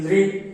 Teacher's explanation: लृ में भी अपनी जीभ दांतों को टच कर रही है